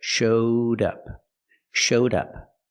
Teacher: showed up I changed the verb show to the Past showed I linked the sound d d with the next word up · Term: link The Sounds